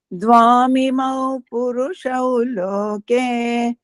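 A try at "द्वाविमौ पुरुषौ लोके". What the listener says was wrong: ದ್ವಾವಿಮೌ. ದ್ವಾಮಿಮೌ ಆಗ್ಬಾರ್ದು. ದ್ವೌ ಇಮೌ. ದ್ವಾವಿಮೌ ಪುರುಷೌ ಲೋಕೆ.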